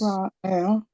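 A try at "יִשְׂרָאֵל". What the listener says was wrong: Ra'el, good,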